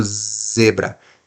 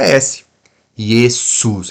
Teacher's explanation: o z vai vibrar a sua mão e o s vai parecer que não tem não tem nenhum tipo de som